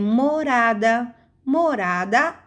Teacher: Depois eu tenho morada. Morada, a sílaba forte é ra. Mo e da chamamos de átona.